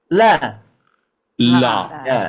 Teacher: Lam ini masih dari ujung lidah menempel ke langit-langit ya.